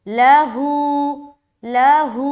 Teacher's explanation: آگے ہو کو بھی اتنا ہی کھینچیں گے جتنا ہم واو مدہ کو کھینچتے ہیں